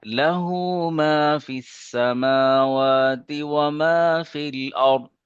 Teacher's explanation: ارض یہ را پر پڑھیں گے اور ضاد کو موٹا پڑھیں گے